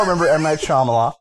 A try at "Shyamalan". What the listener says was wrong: You said Shyamalan. There's an N at the end of his name, so at least Shyamalan.